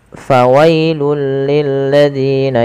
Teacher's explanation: pada lafal fawailul di sini tanwinnya langsung dimasukkan ke huruf lam. Fawailul, ya, awalnya fawailun, karena bertemu dengan huruf lam maka tanwinnya dimasukkan ke huruf lam dan diganti dengan huruf lam. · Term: idgham